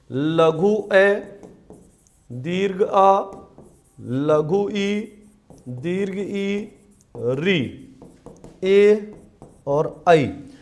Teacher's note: वे स्वर जिनके उच्चारण में होठों की बनावट वृत्त के समान गोल ना होकर फैली रहती है। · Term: अवृत्ताकार स्वर